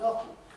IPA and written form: ˈɒfn̩ (often)